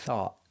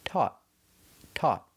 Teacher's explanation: Thought has a TH, So we make a little air with our teeth. Thought. But we end with the stop T.